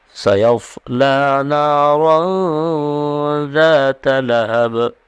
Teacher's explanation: لہب میں با رکنے کی صورت میں با پر جزم آ جائے گا اور قلقلہ ہوگا۔ لہب یعنی با کو ایک دم واضح کر کے پڑھیں گے اور آواز ڈبل آئے گی